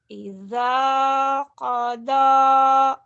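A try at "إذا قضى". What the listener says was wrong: Idza jangan ija. Idza. Idza. Idza qada.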